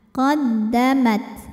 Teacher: maqamat huruf ta ada syidahnya ada sifat kuatnya ya Mad kemudian ada hamsnya ada anginnya ya dan angin di huruf ta Yang sukun keluarnya belakangan